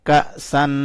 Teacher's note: کاف کو حمزہ کے ساتھ ملایا تو جھٹکے سے پڑا